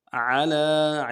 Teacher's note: عین کو واضح کریں گے، لام کھڑا زبر ہے، کھینچیں گے